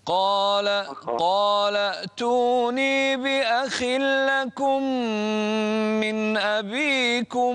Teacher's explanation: الخاء هنا في أدنى مراتب التفخيم